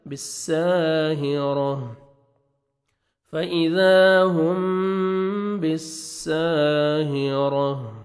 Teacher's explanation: فَإِذَا هُمْ بِالسَّاهِرَةِ الف مدہ 1 سیکنڈ آپ نے سین کو کھینچنا ہے, را کو مرزبر ہے, را کو موٹا کر کے پڑھیں گے, تا کو ہا میں چینج کریں گے, اور ہا ساکن ہو جائے گا